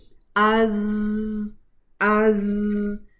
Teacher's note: तो जहर है इस वजह से सिर्फ रखावा यानी कि साउंड है, रनिंग साउंड है, जिसकी वजह से क्या होता है कि ज़ुबान की जो नोक है वो मखरिज पर वाइब्रेट करती है, जिससे बजिंग साउंड आता है